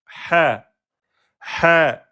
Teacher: la lettre ha est une lettre de la gorge milieu de la gorge